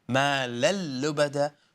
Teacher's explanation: But when we say مَا لَل, idgham, merge, but without ghunna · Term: idgham without ghunna